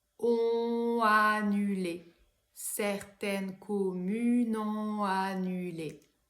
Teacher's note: Donc première difficulté, ici un enchaînement consonantique et également je n'ai pas de silence entre on et a